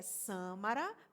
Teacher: É uma palavra que a antepenúltima sílaba é a sílaba tônica. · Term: proparoxítona